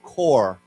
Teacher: It could be Taiwan, but uh, right, we said Marine Corps, but here also this word, even though there's no s, it's still pronounced core with no p